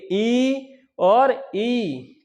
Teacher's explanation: तालु क्या होता है, तालु आप जानते ही होंगे कि जिह्वा के ऊपर जो कठोर भाग होता है उसे हम क्या कहते हैं, तालु। जब ई बड़ी ई का उच्चारण करेंगे तो तालु से जिह्वा का स्पर्श होगा